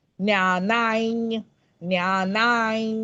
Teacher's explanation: पुढे ज आलाय ज च छ ज झ तर तो त्याचा ज वर्ग असल्यामुळे अनुस्वाराचा उच्चारण यकार आहे तो पण तो य नाही नुसता तो नाकातन पण आला पाहिजे